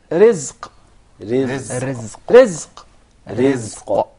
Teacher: Did you notice here the ra is very soft and light? Yeah, because it has a kasra.